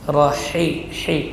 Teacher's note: Ha, huruf yang keluar dari tengah tenggorokan, huruf hamas dan rakhawah.